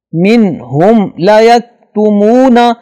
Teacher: منہم لا یکتمون میم کے بعد لام آ رہا ہے جو نہ تو اگر میم کے بعد میم ہو یا میم کے بعد با ہو تو اس کے علاوہ کوئی بھی حرف ہو تو وہاں میم کی آواز کو ظاہر کر کے پڑھتے ہیں غنہ نہیں کرتے لہذا منہم لا یکتمون آواز پہ غنہ نہیں ہوگا میم پر.